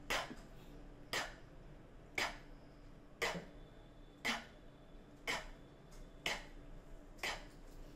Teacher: Rồi, sau đó con phát cái âm k, k, k, k, k, k, k, k. Khi mà con bật hơi và con phát cái âm k thì con thấy là cái hơi con văng ra rất là mạnh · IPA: /k/